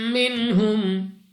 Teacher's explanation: میم مشدد غنہ کر کے پڑھیں گے یعنی ناک میں لے جا کر پڑھنا ہے